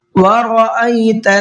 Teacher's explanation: را کو پر کر کے پڑھیں گے، اس لیے کہ را کے اوپر زبر ہے، اور جب را پر زبر ہوتا ہے تو را کو پر کر کے پڑھتے ہیں، منہ بھر کے پڑھتے ہیں۔